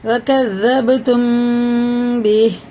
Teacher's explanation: قلقلہ ہے، سخت پڑھیں گے۔ وکذبتم بہ، میم ساکن کے بعد با آ رہا ہے، یہ اخفا شفی ہے، غنہ بھی ہوگا اخفا بھی ہوگا